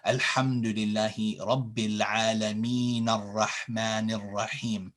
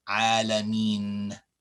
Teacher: So here, when we say Alhamdulillahi Rabbil Alameen, when we stop here. We don't say the Fatha here, unless we're continuing and joining these two verses together.